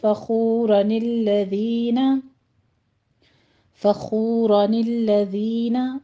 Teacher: فخورن کی جو آخری نون تھی اس کو ہم ملا کر بھی پڑھ سکتے ہیں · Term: اجتماع الساکنین